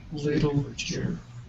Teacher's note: So your T is going from a T, going to that ooh, and on the way there it makes a sh sound. So that's why TU in literature, the chur, it goes ch, Literature.